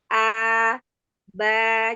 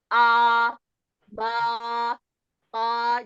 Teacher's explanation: ba jangan tebal dan tidak ke atas tidak naik ke atas suaranya Se lagi coba e gini hamparkan lidahnya lidahnya jangan terangkat ini